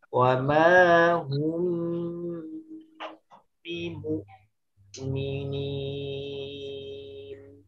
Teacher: hukum mim sukun, ikhfa syafawi, pakai ditahan.